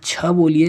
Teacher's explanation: छ बोलने पर आपकी जीभ कहाँ पर टच हो रही है, तालु में। ठीक है, तो छ उच्चारण स्थान क्या हो जाएगा इसका, तालु, तालव्य।